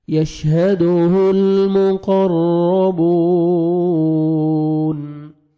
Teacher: المقرب مقرر را مشدد ہے را کو پر کرنا ہے اور را کو جب زبر ہوئے گی تو را کو آپ نے موٹا کر کے پڑھنا ہے